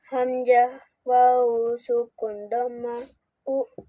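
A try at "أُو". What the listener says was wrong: Panjangin. Kalau u itu 1 harkat. Kalau u 2 harkat. Kenapa ini harus panjang? Karena ada wawu di sukun nih. Domah bertemu wawu sukun itu harus panjang domahnya. Kalau seharkat u.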